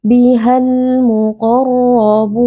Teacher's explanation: ketika ada alif lam bertemu dengan salah satu huruf qamariyah, di sini huruf mim, alif lam dibaca dengan jelas atau ditandai juga dengan tanda sukun. · Biha sebenarnya ada mad tabi'i, tapi karena kita wasal dan melanjutkan bacaan bertemu dengan alif lam, maka mad tabi'i di sini tidak dibaca. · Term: alif lam qamariyah